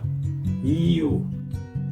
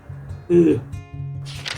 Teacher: For the Japanese U sound, I feel like my lip pull back more, but then there is no forward push.